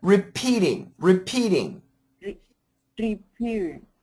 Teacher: make sure the accent goes on the P